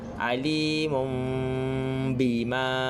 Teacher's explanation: Bunyi mim mati. Kita akan bacanya secara berdengung dan juga bibir kita akan rapatkan sedikit. Kita tak tutup bibir, kita hanya rapatkan. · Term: iklab